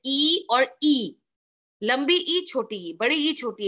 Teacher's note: सिर्फ टाइम का डिफरेंस है, लेंथ का डिफरेंस है, उसमें तो जीभ का भी कोई डिफरेंस नहीं है